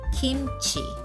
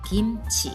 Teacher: It sounds like something between the G sound of the letter G and soft K, but not too strong, a soft sound.